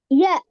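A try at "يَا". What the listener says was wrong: நீங்க நீட்டுங்கோ, நீட்டுறது போதாது.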